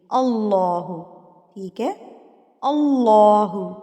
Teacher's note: پر الف کے اوپر زبر ہے تو اللہ لفظ جو ہے ہم پر کر کے پڑھیں گے، یعنی کہ موٹا کر کے پڑھیں گے